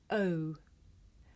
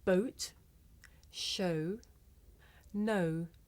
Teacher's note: This is a diphthong, a double vowel sound. The shape the mouth makes changes from the beginning of the sound to the end. It's pronounced O.